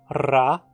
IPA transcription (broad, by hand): ra